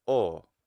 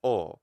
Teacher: That's a circumflex. It's high to low. O. It's not rising, and the reason it's not rising is because the unit of time, it's quantized.